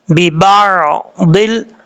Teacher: ضاد حروف مستعلیہ میں سے پر پڑھا جائے گا